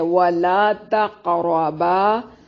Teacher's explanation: ادا کریں گے، ولا تقربا ولا لا الف مدہ ہے، تق قاف پہ قلقلہ ہوگا، را کو موٹا ادا کریں گے